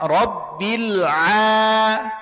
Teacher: huruf Ain termasuk kepada huruf-huruf tipis kesalahan umum yang sering terjadi banyak sekali yang menebalkan huruf Ain